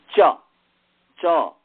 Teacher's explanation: जिह्वा के मध्य से तालु वर्ण तालव्य बोला जाता है